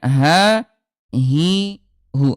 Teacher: Sementara kalau huruf ha dia keluarnya di pangkal tenggorokan